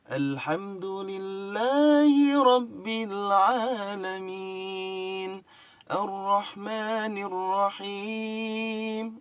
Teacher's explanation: jiharkah pertama naik, kalau diterusin jiharkah kedua datar, jiharkah ketiga turun